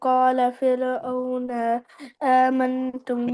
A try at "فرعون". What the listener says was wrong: फिरौन नहीं, फिरौन नू है, नून पर पेश है।